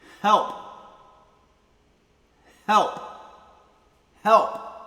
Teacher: it uses the soft H sound as well as the hard P plosive sound, so you get the full dynamic range tested.